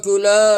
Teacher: लाम अलिफ ज़बर ला 1 उंगली की मिक़दार खींच के पढ़ेंगे